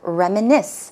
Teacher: the stress goes on the last syllable